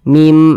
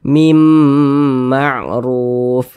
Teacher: didengungkan jadi suaranya itu kita tahan kita panjangkan sejenak nah mim di bagian mimnya itu kita tahan kita panjangkan sejenak